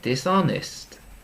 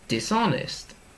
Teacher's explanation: we're looking for the stress on the middle part of the word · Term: syllabus stress